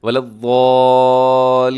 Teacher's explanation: لام کے اوپر آپ نے تھوڑا سا رکنا ہے، کیونکہ لام کے اوپر شد ہے